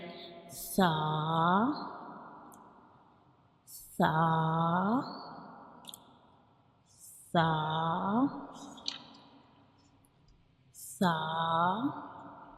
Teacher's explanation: when we pronounce sa, we touch the tip of tongue to the edges of upper teeth, like sa, sa, sa, sa.